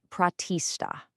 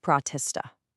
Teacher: The Sanskrit word pratishta. You hear that little puff of air in the th?